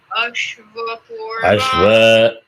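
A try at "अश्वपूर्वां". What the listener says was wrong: All three are anudata. No, don't start. Don't say Ashwa. When you say Ashwa means A is Udata. You start from Anudata.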